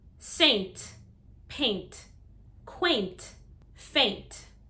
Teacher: in american english we do use a hard t sound at the end also